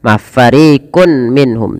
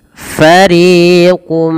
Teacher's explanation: tanwinnya masuk kepada huruf mim dan diganti bunyi suara mim. Jangan lagi fariqun minhum, tapi langsung mengasuk kepada mim. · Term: idgham bi gunnah